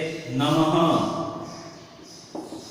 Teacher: जहां पर भी जिस भी वर्ण के पीछे ये विसर्ग लगेगा उसमें आधे ह का उच्चारण होगा